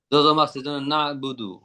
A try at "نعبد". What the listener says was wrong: জি, না না, আইনটা একটু দাবাইতে হবে, আইন একটু ওই যে গলার মধ্যে মাঝে থেকে আসবে তো, এই জন্য না বুধু। ইয়াকা না'বুদু ইয়াকা না'বুদু।